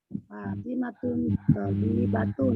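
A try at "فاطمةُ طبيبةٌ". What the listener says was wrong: Fatimatu Bu, Fatimatu bukan tanwin. Fatimatu tabibatun.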